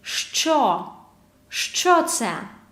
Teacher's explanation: Hard pronunciation, affricate from 2 sounds. Ш, ч.